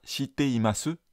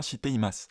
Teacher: la prononciation où c'est dévoisé est plus naturelle · on va pas faire vibrer les cordes vocales sur le Chi et du coup on va pas dire ch on va dire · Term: dévoisement